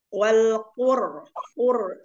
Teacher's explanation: ra sukun yang diawali dengan dhammah dibaca tafhim